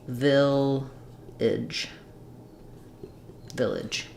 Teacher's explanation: you can either use an I or a schwa, I or a. It's just as long as it's a reduced vowel at the end of this word